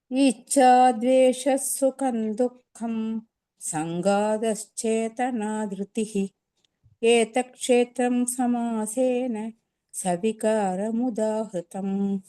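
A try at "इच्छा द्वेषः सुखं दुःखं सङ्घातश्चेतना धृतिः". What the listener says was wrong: Beautiful, ரொம்ப அழகா இருந்தது. இந்த காத்த, அந்த கா மட்டும்தான் குறைச்சலா இருந்தது.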